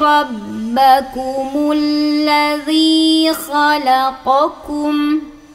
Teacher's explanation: Ya ayyuhan nasu budu rabbakumul ladzi khalaqakum. Ini ku ya, ini qa, naikin pangkal lidah, ka datar